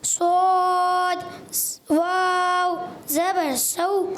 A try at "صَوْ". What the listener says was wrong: اور صاد کو موٹا کرنا ہے. صاد واو زبر صو.